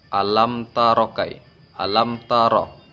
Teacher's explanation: Ro di sini dibaca tafkhim karena berharkat fathah. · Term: ro tafkhim